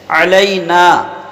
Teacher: جو عین ہے تو اس کا توجہ دے لیں گے کہ درمیان حلق سے ادا کریں گے